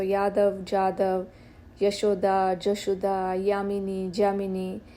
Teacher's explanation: And there is this year to jar transformation.